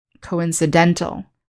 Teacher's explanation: in the adjective form we put the stress on the second to last syllable